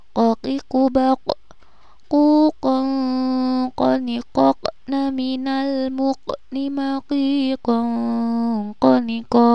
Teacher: Jadi ketika ada qaf yang disukun maka harus dipantulkan ketika membacanya. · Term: qalqalah